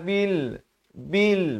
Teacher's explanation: bunyi Bi bukan bunyi be bila bertemu lam jadi Bil